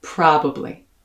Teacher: now stress the first syllable and slide through the rest of the word